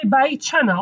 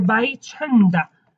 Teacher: You can say ama bai chanda, you can say ama bai chanda. As I said in Slemani, we do not pronounce D.